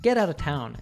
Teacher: We can hear the T in the word get being pronounced as a flap T, which then connects to the vowel sound in the word out.